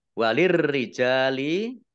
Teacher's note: Ro langsung masuk ke huruf berikutnya yaitu ro ditandai roknya ada tasdidnya. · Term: alif lam syamsiyah